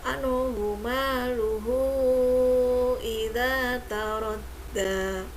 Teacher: Maka dibacanya tidak panjang ya, pendek ya. Maluhu ada hak domir bertemu dengan hamzah. Nah, ini termasuk mat silah tawilah. Dibacanya panjang ya.